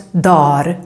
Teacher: the original word dagar, days, normally becomes dar when we speak really fast